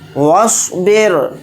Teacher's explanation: رائے ساکنہ سے پہلے زیر ہے اور زیر اصلی ہے، اس لیے اس رائے ساکنہ کو باریک پڑھیں گے